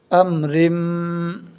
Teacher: میم مشدد کی آواز کو ایک الف کے برابر ناک میں روک کر پڑھیں گے